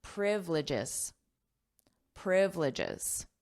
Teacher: So we have the syllable stress on the first syllable.